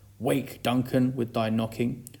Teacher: wake is stressed which we don't expect and I'm pentameter this shows the urgency of his plea here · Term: initial inversion